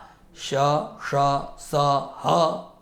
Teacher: ऊष्माणः वर्णाः ये वर्तन्ते यथा श ष स ह एते महाप्राणाः भवन्ति